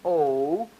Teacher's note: more rounding as my tongue is rising back there